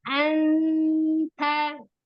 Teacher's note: sempurna Anta bukan Ang ya E di Nun ya mendekati nunnya Anta nunnya tetap tipis karena tanya itu tipis